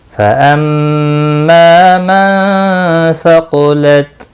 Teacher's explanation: फ़अम्मा मीम मुशद्दिद पर गुन्ना होगा। मा अलिफ मद्दा है, 1 अलिफ के बराबर खींच कर पढ़ेंगे।